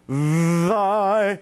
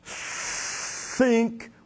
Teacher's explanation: The TH can be both voiced or voiceless in thy or think, where it's just air.